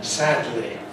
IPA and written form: ˈsædli (sadly)